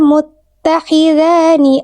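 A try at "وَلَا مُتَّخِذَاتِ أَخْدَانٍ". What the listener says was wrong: Oke, bukan muttakhidhani, tapi muttakhidhati.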